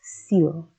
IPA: sil